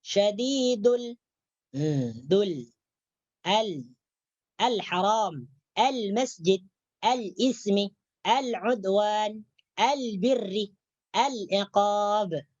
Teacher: Jadi diangkat tepi hujung lidah menyentuh langit-langit atas. Itu makhraj lam.